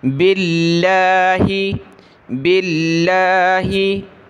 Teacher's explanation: لفظ اللہ سے پہلے زیر ہو تو پتلا کریں گے